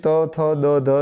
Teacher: ત થ દ ધ જે છે એ દંત્ય તરીકે ઓળખાય છે